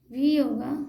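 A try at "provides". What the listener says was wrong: भी नहीं, वाई होगा, वाई वाई, तब ना वाई होगा। प्रोवाइड्स,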